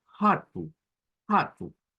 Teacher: que la r cultural la pronunciemos como que es una J Entonces eso podría sonar como hatu hatu como una j Amén